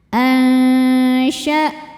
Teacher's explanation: hamzahnya tertahan ya, punya sifat namanya syiddah dari segi suara. · Karena nun sukun bertemu huruf shin. Cara bacanya nun disamarkan ke shin disertai dengungan ya. Samar dan dengungannya ini sama besar ya, karena shin ini makhrajnya pertengahan, tidak terlalu dekat, tidak terlalu jauh dari nun. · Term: ikhfa hakiki awsatu